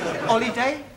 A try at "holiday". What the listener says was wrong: You keep dropping your aspirates. An aspirate is the sound made by the letter H. The words you've given me all start with H and not with an O. I want a word beginning with O.